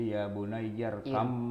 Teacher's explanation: Ini berarti huruf tersebut diubah menjadi mim sehingga bacaannya menjadi ya bun yarkam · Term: idgham